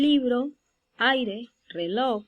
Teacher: Entonces, el acento en las palabras siguientes, en el caso del libro, aire, reloj, el acento o sílaba tónica lo vamos a encontrar en el primer ejemplo en li, en el segundo en ay, en el tercero en lo